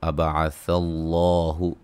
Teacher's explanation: لفظ اللہ کے لام کو موٹا، اس سے پہلے زبر